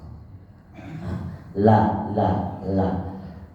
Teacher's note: sini ini keluar terus kemudian dia berpindah ke tepi-tepi ini lam ya dia berpindah ke tepi jadi anginnya keluar dari samping itu lamah l l l Karena ujung lidahnya naik ke atas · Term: huruf lam